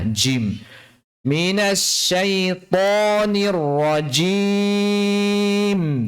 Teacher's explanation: J, kalau J-nya orang Indonesia, J cuman sekedar pakai ujung lidah saja. Tapi kalau jim-nya Arab ini pakai tengah lidah. Makhrajnya di tengah lidah, jim. Minasyaitonir rajim.